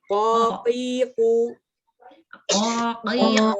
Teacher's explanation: ko ini lidah bagian belakang menempel langit-langit atas ya. Langit-langit yang lunak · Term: huruf ko